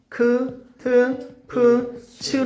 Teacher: 흐그, 흐드, 흐브, 흐즈가 되면서 크, 트, 프, 츠로 소리가 합쳐진 걸 우리는 축약이라고 얘기를 해요